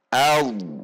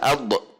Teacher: Mengalirnya huruf dhad di sini menunjukkan bahwa ketika sukun, huruf dhad tidak memantul atau tidak terhentak, tetapi seperti tertelan. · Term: ar-rakhawah